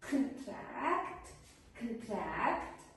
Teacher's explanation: as a verb, contract, the stress is put on the second the second syllable. So, the first syllable produces a schwa sound.